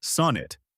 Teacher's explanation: The pronunciation is sonnet, with stress on the first syllable. Break it into two parts, sun and it.